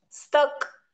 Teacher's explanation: पुस्तक मध्ये पू हा पूर्ण शब्द आहे, क हा पूर्ण शब्द आहे आणि मध्ये जो स्त येतो त्याच्यातला आपण स अर्धा बोलतो आणि त पूर्ण बोलतो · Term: जोडाक्षर